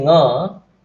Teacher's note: Once you say nga, stoppage happens at the velar position, throat position. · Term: nasal sounds